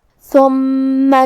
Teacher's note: حرف الثا کو ہم زبان کے سر اور اوپر والے دانتوں کے اندرونی کناروں سے ادا کریں گے